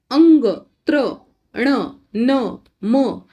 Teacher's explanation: अनुनासिक व्यंजने अंग, त्र, ण, न, म या वर्णांचा उच्चार त्या त्या वर्णाच्या उच्चार स्थानाबरोबर नाकातूनही होतो